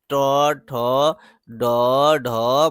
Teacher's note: ट वर्ग के बारे में कहा जाता है मूर्धा से बोला जाता है।